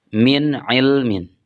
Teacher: di sana ada nun mati kemudian diikuti oleh Ain sehingga dibacanya izhar atau jelas